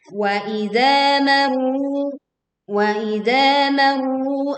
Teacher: kita tekan ra sukun ra bertasydidnya, kemudian panjangkan 2 harokat